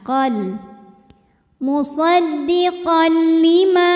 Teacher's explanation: ada hukum idgham bila ghunah karena tanwin fathah menghadapi huruf lam maka bunyi tanwinnya masuk ke lam lebur tidak disertai dengungan Jadi cukup ditekan qol musaddiqon lima Ma hukumnya adalah Mad Thobi'i